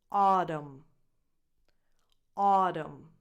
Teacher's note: the first syllable is the stressed one so you have [ɔ] as in “awesome” just like “August”.